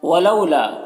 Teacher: یہ واو لینے سے نرم آواز کے ساتھ جلد پڑھیں گے